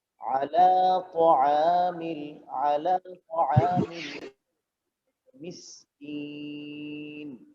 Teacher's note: আলা এক আলিফ লম্বা হবে, আইন আলিফ জবর এক আলিফ লম্বা হবে, আলা তাআমিল, আলা তাআমিল মিসকিন।